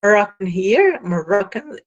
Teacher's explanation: In other words, Moroccan, it is the stress falls on the second syllable, that is comparing from left to right, second syllable, and it is given, the vowel is the penultimate vowel. Stress falls on the penultimate vowel.